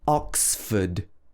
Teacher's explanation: a ford and it's made up of these two parts but we stress the ox so it should be oxford